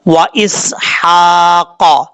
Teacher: سین کے بعد ہا ہے، یہ ہا بریک پڑھا جائے گا، اس کو بھاری آواز کے ساتھ پڑھنے کی ضرورت نہیں ہے